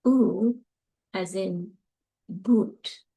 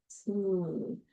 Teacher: A high back vowel. These are going to be all back vowels. It's tense. And you saw my mouth was rounded.